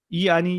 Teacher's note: इ आणि इ मध्ये टाळूकडे जीभ जाते म्हणून त्यांना तालव्य म्हणतात